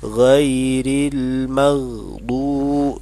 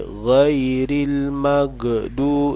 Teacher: Di situ ada huruf gha yang sukun atau yang dimatikan, tidak boleh dibaca qalqalah, ya. Ghairil maghdu dibaca seperti itu, tidak boleh ghairil magdu, tidak boleh.